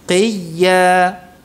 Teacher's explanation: Yang penting itu makhraj ya-nya di tengah lidah itu ditekan. Qiyya. Ya, jadi tidak diucapkan dari rongga mulut seperti halnya mengucapkan huruf mad, ya mad, bukan qiyya, enggak.